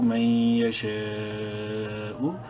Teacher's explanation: 5 الف کے برابر لمبا کر سکتے ہیں شین کو · علامت تو کی وجہ سے یہاں ہم وقف کریں گے اور وقف کی صورت میں حمزہ کی پیش اڑ جائے گی، من یشاء پڑھا جائے گا